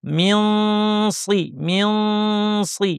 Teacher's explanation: ইখফা করতে হবে, অর্থাৎ জিহ্বাকে সদের মাখরাজ, জিহ্বার শীর্ষ নিচের পাটির দাঁতের গোড়ায় নিয়ে নাক থেকে গুন্না। আর সদ যেহেতু ভারী, গুন্নাটা ভারী হবে।